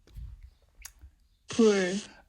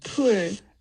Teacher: it's partly based on the aspiration right after the stop, but there's also an F0 difference